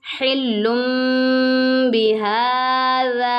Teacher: यानी नून साकिन और तनवीन को मीम से बदल कर इख्फा करेंगे, यानी गुन्ना करके पढ़ेंगे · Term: इकलाब